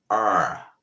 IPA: r